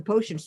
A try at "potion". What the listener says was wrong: Can I correct your pronunciation of the word potion? There's no T at the end. Yeah, but you've been pronouncing it potion. You have. I've been trying really hard not to be rude, but yeah, there's no T at the end.